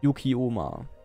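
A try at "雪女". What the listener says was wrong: Onna. Onna. Nicht Oma, sondern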